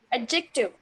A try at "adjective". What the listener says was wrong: No, no. Just skip the D. Skip the D. It's adjective. Adjective. You don't have to pronounce. You don't have to pronounce D.